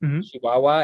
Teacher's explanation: one of the things that you hear from a Chihuahuan accent is like instead of a ch for the CH, it's more of a sh sound